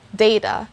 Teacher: you will hear the sound of the letter a the long sound of it on the first syllable